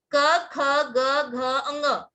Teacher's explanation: इनका उच्चारण कंठ की गले की मदद से होता है